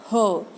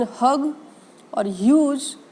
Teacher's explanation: When we are producing sound h, as in hug or huge, h sound is called as the voiceless glottal fricative, which means that the sound is made with the motion of your vocal cords, but it is not voiced.